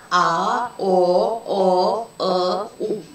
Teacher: Тілдің қатысына қарай дауысты дыбыстар жуан және жіңішке болып бөлінеді. Жуан дауысты дыбыстарды айтқанда тіл артқа тартылады.